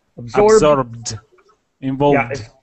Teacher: The ED is pronounced as a D as quickly as possible.